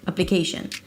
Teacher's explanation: The primary stress here is the K syllable. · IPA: ˌæpləˈkeɪʃən